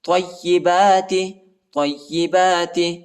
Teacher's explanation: تو کو یا کے ساتھ ملائیں گے، یا کو شدت کے ساتھ پڑھنا ہے